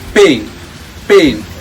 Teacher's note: first begins with A, then it turns into AIN. So the fluctuation of the vowel sounds are really important, and that's called a vowel. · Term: diphthong